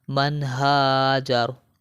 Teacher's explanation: نون ساکن ہے اور نون ساکن کے بعد دیکھیں ہا آ گیا ہے، تو یہاں پر ہم غنہ نہیں کریں گے